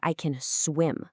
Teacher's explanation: When you make a positive statement, the power isn't on can, it's on the action.